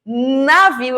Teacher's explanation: navio eu não tenho essa união eu tenho a ponta da língua tocando a raiz dos dentes incisivos superiores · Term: consoantes nasais